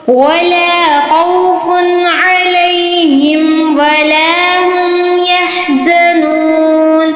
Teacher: खौ जो है हमने पुर पढ़ना है, मोटा करके पढ़ना है।